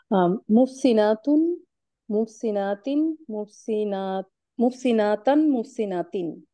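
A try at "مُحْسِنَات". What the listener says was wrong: আপনি কি একালিফ টানতেছেন লাস্টের দিয়ে মনে হচ্ছে? এখানে আপনি যে তার উচ্চারণটা আসতেছে, এটা কি আপনি কোন তায় ব্যবহার করছেন?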